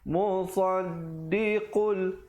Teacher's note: Musaddiqul, di situ idgham bila gunnah, masuk tanpa dengung kadar panjang 2. Jangan dipanjangkan, maafkan sekali lagi.